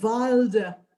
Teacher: in german careful not to stress the end syllable